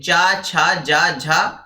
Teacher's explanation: स्पर्श संघर्षी जो व्यंजन होते हैं वह च वर्ग के होते हैं